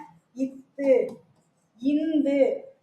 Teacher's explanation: இந்து பாக்கல அப்ப இத்து இந்து ஆகிய இரு மெய்களும் மேல்வாய் பல்லின் அடியை மேல்வாய் பல்லின் அடியை நாக்கின் நுனி பொருந்துவதால் பிறக்கிறது அப்படின்னு இருக்காங்க இந்த மேல்வாய் பல்லோட அடியை வந்து நாக்கோட நுனி இந்த இடத்துல